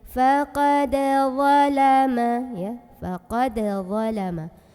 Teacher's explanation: Karena ada huruf qalqalah yaitu dal yang sukunnya sukun asli bawaan dari kalimatnya dan biasanya berada di tengah-tengah bacaan. Maka ini cara membacanya dipantulkan dengan pantulan yang kecil. Dan suara pantulan itu mengalir ya, jadi tidak tertahan. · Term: qalqalah sughra